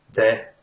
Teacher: if you pronounce the definite article there as de it's fine that's how people speak in ireland